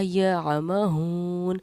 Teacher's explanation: واو ساکن سے پہلے کیونکہ پیش ہے تو ہم نے واو کو حروف مدہ پڑھا، ہا واو پیش ہو۔